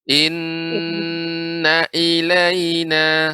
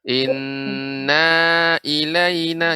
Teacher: Inna ilaina sehingga na jadi panjang. Jadi inna ketika membaca na tidak ditekan, tidak dipanjangkan.